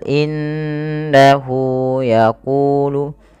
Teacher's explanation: menahan suara bunyi nunnya dan dimasukkan ke rongga hidung sepanjang dua harakat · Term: gunah